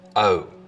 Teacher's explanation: starts with the tongue further forwards in the mouth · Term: goat fronting